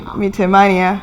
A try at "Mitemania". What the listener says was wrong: We are saying meatmania. Meatemania. No, you're saying tea as opposed to te. Meatemania. No, ask Kiswahili, te. Kiswahili, te.